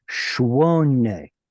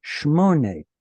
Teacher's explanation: Shwone with a W sound in it. And in Hebrew, that turns into a mem, Shmone. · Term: bilabials changing out